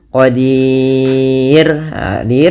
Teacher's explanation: Nah, kemudian yang terakhir ada huruf roh. Rnya di sini dibaca dengan tipis, tidak dibaca dengan tebal.